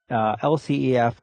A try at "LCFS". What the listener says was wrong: LCFS. You said LCEF, which is